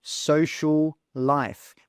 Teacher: We've got two L sounds together, so we simply say one of those L's.